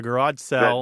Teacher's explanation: There is a vowel merger taking place in this part of the country that you're talking about, where sale, S-A-L-E, and sell, S-E-L-L, sound a lot alike.